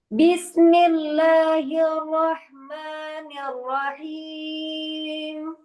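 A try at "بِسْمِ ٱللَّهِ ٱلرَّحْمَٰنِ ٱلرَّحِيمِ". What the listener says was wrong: Rohimnya terlalu panjang. Afwan. Terlalu tinggi maksud kami. Terlalu tinggi rohim. Turunkan lagi.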